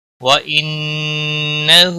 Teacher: ان نون مشدد پر گنہ ہوگا ، ہا کے اوپر الٹا پیش ہے، ایک الف کے برابر